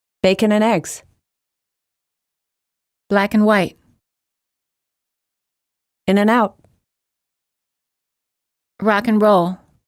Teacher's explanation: And becomes n. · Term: weak forms